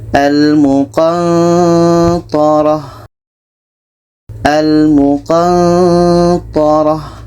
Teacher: Ketika sebut huruf nun, kita merasakan huruf ta. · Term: ikhfa hakiki